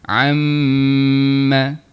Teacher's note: Ha kita rasa dengung tu dekat rongga hidung kita kan. · Kita makhrajnya di bahagian bibir, perlu rapat kedua bibir kita untuk huruf mim. Jadi rapat dulu, kemudian baru dengung. Masuk makhraj huruf mim, kemudian kita masuk keluarkan dengung dia.